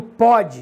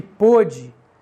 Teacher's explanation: o ó é aberto no primeiro e fechado no segundo · Por exemplo, eu digo pode, é diferente de pôde, mas são duas vogais. O O é aberto no primeiro e fechado no segundo.